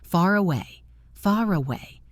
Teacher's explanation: The R moves to the next word.